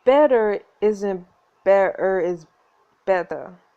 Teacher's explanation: high-class British drop the R at the end of the word